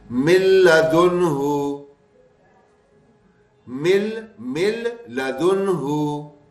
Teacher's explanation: نون کی آواز بالکل ختم کریں گے اور غنے کی بھی نہیں آئے گی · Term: بغیر غنے